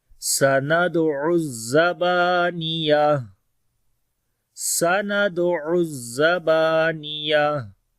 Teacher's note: سین کے اندر صفت ہمس ہوگی، دال کے اوپر قلقلہ کریں گے، عین کو گلے کے درمیان والے حصے سے پڑھیں گے